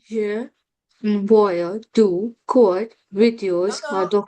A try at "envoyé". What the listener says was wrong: No, not envoy, envoyé. Envoyé. Envoyé.